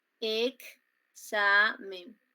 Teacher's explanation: esa x que normalmente se escribe está sonando como ks